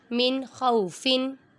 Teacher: میم متحرک، نون پہ اظہار ہو رہا ہے کیونکہ نون ساکن کے بعد خا آ رہا ہے حروف ہلکی میں سے، اور یہاں پر غنہ نہیں کریں گے